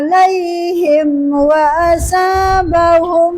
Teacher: Jadi harus jelas mim sukunnya, enggak boleh dengung. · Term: izhar syafawi